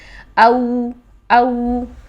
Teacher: واو ساکن سے پہلے زیر نہیں آتی ہے. تو واو ساکن سے پہلے جب زبر ہو تو یہ واو لین ہے اور اس کو ہم شفتان سے ادا کریں گے